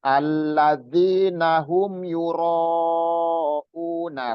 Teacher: Ro itu panjang, itu mat jaiz mufasil.